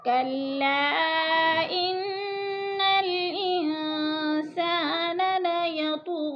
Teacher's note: انسان لیطغی کی طا ہلا کے پڑھیں گے، حروف قلقلہ میں سے ہے، اور غین کے اوپر کھڑی زبر ہے، کھینچ کر پڑھیں گے 1 الف کے برابر۔